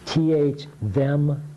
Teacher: You stick your tongue out. This is the one that vibrates that uses your voice.